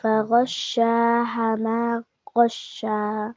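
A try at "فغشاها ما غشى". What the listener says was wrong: Okay, madda. Okay, so balance it. Okay, you are stretching this little lesser and this little longer. Okay, so one finger open and close. Okay, for madda stretch. فغشاها ما غشا.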